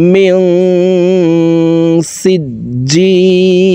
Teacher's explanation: দেখুন নুন সাকিনের পরে ইকফার 15টি হরফের ভিতরে একটি হরফ সিন আসছে, এই কারণে এই নুন সাকিনকে নাকের ভিতরে লুকাইয়া গুন্নার সহিত পড়ব। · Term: ইকফাহ গুন্না